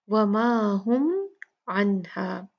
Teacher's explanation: میم ساکنہ کا یہاں پر ہم اظہار کریں گے، میم کو اچھے سے پڑھیں گے لیکن زیادہ غنہ نہیں ہوگا۔